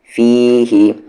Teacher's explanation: فی ہی، یہ نہیں کہ فی ہی، یہ غلط ہے. فی ہی، فی کو کھینچیں گے، ہی کو نہیں